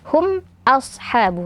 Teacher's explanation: Huruf hamzahnya tipiskan, kemudian tebalkan shadnya.